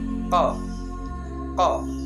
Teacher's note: Pangkal lidah naik ke atas langit-langit, isti'la, terbuka antara lidah dan langit-langit atas, infitah, tidak lancar dan hati-hati, ismat. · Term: qalqalah